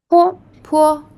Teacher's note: 坡 it sounds like the letter P in the word pat, but it is aspirated, so you can press your lips together and then release with a burst of air, and your tongue is relaxed, resting on the button.